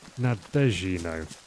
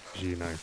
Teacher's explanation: Put the accent on the second syllable, it should be nino.